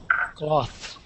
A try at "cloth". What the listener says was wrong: Yeah, very good. So with an aw sound there, cloth.